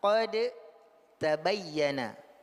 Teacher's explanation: Kalau dal sifatnya jahr, kalau ta sifatnya hamas. Jadi inilah yang disebut dengan tajanus. · Intinya adalah da dan ta makhrajnya sama. Tapi berbeda pada fi takwinis saut.